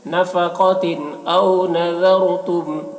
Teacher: تنوین کے بعد حمزہ ہے جو حروف حلقے میں سے، تو تنوین کو ظاہر کر کے پڑھیں گے ، اسے اظہار کہتے ہیں، نفقتن او نذرتم، ذال کو باریک